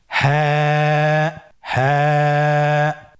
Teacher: হা হরফটি উচ্চারণের স্থান কন্ঠনালীর শুরু হতে অথবা আমরা যদি আরবিতে বলি হলকের শুরু হতে এটা এ হরফটি উচ্চারিত হয় কন্ঠনারীর শুরু থেকে